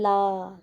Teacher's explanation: इसके उच्चारण में वायु जीवा के दोनों ओर से बाहर निकल जाती है, यानी कि जब हम ल को बोलेंगे ला, तो देखिए बाहर इधर उधर जगह सी रहती है जीभ की, जब बोलकर देखेंगे आप तो बाहर निकलती है। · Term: पार्श्विक व्यंजन